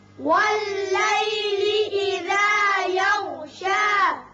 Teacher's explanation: غین کو ذرا پر کر کے پڑھیں گے. وقت کی صورت میں یہ شا ہی رہے گا، وصل کی صورت میں بھی شا رہے گا، ایک الف کے برابر